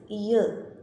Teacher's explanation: The front of the tongue is the active articulator and hard palate is the passive articulator. അതായത് പാലറ്റൽ സൗണ്ടിൻ്റെ പ്രൊഡക്ഷൻ്റെ സമയത്ത് front part of the tongue, അതായത് ടങ്ങിൽ tip blade അത് കഴിഞ്ഞ് വരുന്ന പോർഷനാണ് front. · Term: palatal